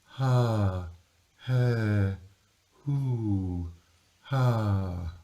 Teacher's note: When you get the oo, because of the lip rounding, the airflow feels much stronger on your hand. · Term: breathy light setting